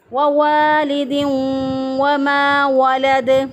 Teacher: میم زبر الف ما الف مدہ ہے، ایک الف کے برابر اس کو لمبا کریں گے ، یعنی اس کو یہاں پہ مد اصلی کریں گے، یعنی